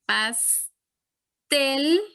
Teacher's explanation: ven que suena más fuerte en tel en la última sílaba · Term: acento prosódico